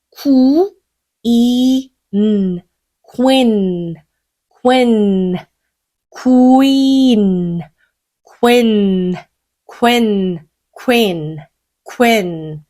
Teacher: 크 소리에다가 U의 장모음 소리 넣을게요. Q, Q. 입 좁게 모아주세요.